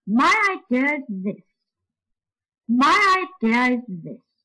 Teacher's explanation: my is on a high note followed by a weak syllable idea is on a slightly lower note also followed by a weak syllable and this is lower still and falls right down